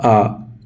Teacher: विस्तृत स्वर, जिसके अंतर्गत मुंह पूरा खुला रहता है